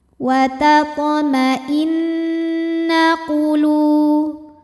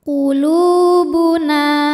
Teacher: Lu, hukum tajwidnya adalah mad tabi'i dhahiri, sebab ada waw sukun sebelumnya berharokat dhammah. Maka cara bacanya, lam dipanjangkan 2 harokat.